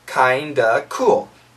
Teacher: if we have the word of followed by a consonant this f sound is canceled